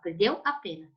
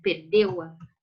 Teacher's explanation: eu não vou juntar as minhas duas vogais, porque eu não pronuncio juntas